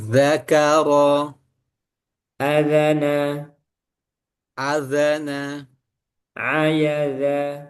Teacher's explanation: Huruf dalal keluar dari ujung lidah bertemu gigi bertemu ujung gigi seri atas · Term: huruf zal